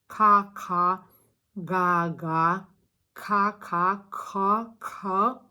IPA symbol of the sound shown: k